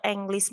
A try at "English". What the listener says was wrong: English. Jadi E-nya itu dibaca I ya, bukan baca E juga. English.